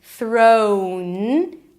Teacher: O as in go. Make sure you add a w at the end.